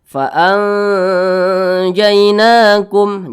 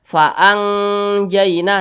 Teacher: cara bacanya itu disamarkan, didengungkan. Kemudian antara samar dan dengungnya itu seimbang. Jadi antara bunyi n dengan bunyi eng di tengah-tengahnya. Jadi dibaca fa'anjainakum. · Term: ikhfa hakiki awsat